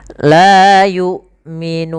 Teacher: seakan-akan putus suaranya, tapi dia tertahan, bukan putus. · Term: huruf hamzah